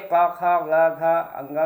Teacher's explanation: आपका जो उच्चारण स्थान होता है वो होता है कंठ से, इसलिए इसको कहते हैं कंठवर्ण।